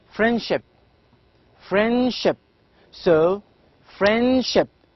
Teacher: d is not clear in fact it is not pronounced here